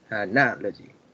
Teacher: It has 4 syllables, and on the second one is the stress